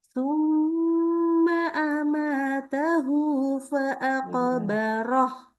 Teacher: Jadi Ana kasih tahu juga mim tasydid dengungin.